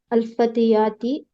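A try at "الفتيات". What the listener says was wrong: फतियाती क्यों हो जाएगा, कौन उसको जेर देने वाला है? साफ, फतयात साफ पढ़ना है।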